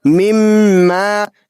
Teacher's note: میم مشدد ہے تو اس پہ غنہ کر کے پڑھیں گے اور الف مدہ کو تھوڑا سا کھینچ کر پڑھیں گے. تا